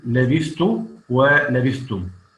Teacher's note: كل هذه الكلمات يدغم الثاء في التاء